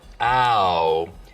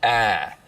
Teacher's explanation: Now smoothing is when you take a diphthong, like ow, and smooth it out so it's just one sound, ah.